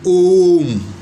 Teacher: प्लुत के उच्चारण में 3 मात्रा का समय लगता है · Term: प्लुत स्वर